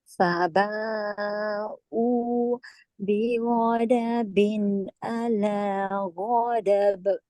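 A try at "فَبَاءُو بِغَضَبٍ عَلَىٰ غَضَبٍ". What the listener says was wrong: Salah huruf. Bighadabin. Tebal. Bighadabin ala ghadab. Ghadab maksud lain. Ghadabin.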